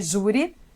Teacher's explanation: essa palavra é uma paroxítona, porque ela tem a tonicidade na penúltima sílaba